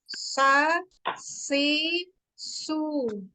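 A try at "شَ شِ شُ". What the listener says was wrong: Nah, masih di ujung lidah anti. Tengah lidahnya coba dinaikkan tengah lidahnya.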